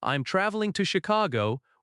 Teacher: In American English, friendliness often comes from light rising intonation in casual questions and warm falling intonation in statements. If you say, I'm traveling to Chicago, with a calm falling tone, it sounds confident.